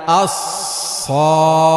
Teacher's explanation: জিহ্বার আগা সামনের নিচের 2 দাঁতের আগার সাথে লাগাইয়া আস-সদ উচ্চারিত হয়। সদ পড়তে লম্বা টান ভুলবো না, অল্প টান হবে না।